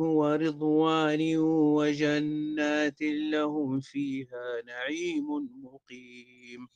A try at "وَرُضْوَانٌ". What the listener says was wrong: ورضوان بضم الراء، كل ما كان عند شعبة من هذه الكلمة بضم الراء. ورضوان ورو بضم الراء رو رو.